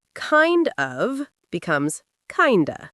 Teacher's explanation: The d sound blends with the o to make that uh sound